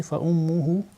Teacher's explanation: Par exemple, nous avons mim mushaddad dans le 10e verset, fa ummuhu. Dans le mim mushaddad, on applique runna d'une façon soutenue.